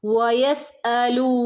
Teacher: വ മദ്ദ ഉണ്ട് രണ്ടനക്ക നീട്ടി കൊടുക്കുക